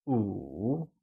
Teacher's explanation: 5 translates to 五 and is said with a falling, rising tone